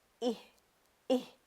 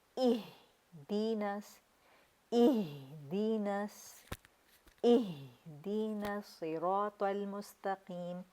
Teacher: جھٹکا نہیں دینا، ہا کی آواز آپ کے حلق سے نہیں، آپ کے سینے سے نکلے گی. یعنی اس طرح کہ آپ سینے پہ ہاتھ رکھیں گے تو وائبریٹ کرنا چاہیے آپ کا نا سینہ.